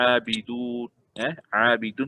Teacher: Mad asli kadar harakat dia hanya 2 harakat. Pada abidun, abidun 2 harakat.